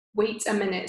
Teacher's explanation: in his American accent, he makes the T sound on wait sound like a D.